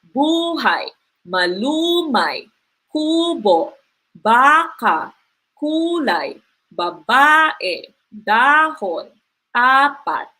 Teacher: the stress is on the second syllable prior to the end. Okay, second to the last syllable siya.